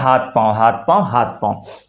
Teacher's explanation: तो थ की जगह पर त का उच्चारण कर देते हैं